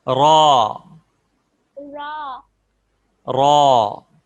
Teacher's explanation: را کو موٹی آواز میں پڑھتے ہیں اور زبان کو اپنے تالو کی طرف اوپر اٹھائیں تو اس سے را موٹی ہو جائے گی۔